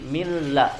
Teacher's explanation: Karena ada lam atau yang menjadikan huruf nun sukunnya tidak dibaca, artinya dileburkan secara sempurna ke huruf lam. Bunyi huruf nunnya tidak dibaca. Ya otomatis sifat gunnahnya juga hilang. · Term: idgham bila gunnah